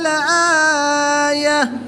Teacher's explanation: گول تا کو وقف کی حالت میں ہاں ساکن سے تبدیل کر کے پڑھیں گے، خواہ اس کے اوپر کوئی بھی حرکت ہو۔